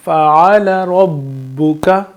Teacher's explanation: با پہ تشدید ہے تو ہم یہاں پہ اس کو ملائیں گے اور اس پہ زور دے کے پڑھیں گے